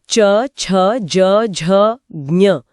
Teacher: च वर्ग च, छ, ज, झ, ज्ञ को बोलते समय जीभ का बीच का हिस्सा इसी तालु को छूकर हवा को रोकता है। च, हाँ, क से थोड़ा आगे जीभ ठीक वहीं टकराएगी।